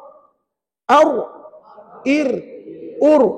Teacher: Kata ulama, nak sebut ra belakang hujung lidah ni. Belakang hujung lidah ditekan ataupun diangkat ke gusi atas. Bukan langit-langit, gusi lah perempuan, ya.